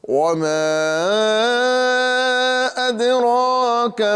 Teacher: اور ساتھ ہی ساتھ دال یہ حروف قلقلہ میں سے ہے، جی ہاں حروف قلقلہ 5 ہے، اسی میں سے ایک حرف ہے دال۔ یہ دال جو ہے آواز اس میں لوٹے گی، یعنی اد اگر ہم نہیں لوٹاتے ہیں تو اس کی آواز نکلیں گی اد، تو یہ دال کی آواز واضح نہیں ہوئی، مکمل نہیں ہوئی، اور یہ دال صحت کے ساتھ ادا نہیں ہوئی، لہذا صحت کے ساتھ ادا کریں گے تو اسے میں قلقلہ کرنا بہت ضروری ہے۔